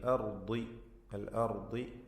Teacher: അൽ അർദി ഇതിലെ റാ ദ്വാദ് ഈ രണ്ടക്ഷരങ്ങളെ തഫ്ഖീം ചെയ്യണം. ദ്വാദിന് കസ്റാണ്, കുറഞ്ഞ തഫ്ഖീം മതി.